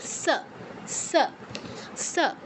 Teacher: দন্তস উচ্চারণের ক্ষেত্রেও উপরের পাটি দাতে উচ্চারণ করবে